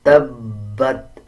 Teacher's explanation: اب با کے اوپر شد ہے، مضبوطی دیں گے با پہ اور با کو پچھلے الفاظ یعنی تا کے ساتھ ملا کے پڑھا جائے گا